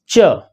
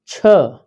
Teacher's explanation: इनका पहला चरण स्पर्श से शुरू होता है और अंतिम चरण संघर्ष होता है। जैसे जब हम बोलते हैं च, जब हम बोलते हैं छ, जब हम बोलते हैं ज, जब हम बोलते हैं झ, तो पहले जीभ स्पर्श करती है। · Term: स्पर्श संघर्षी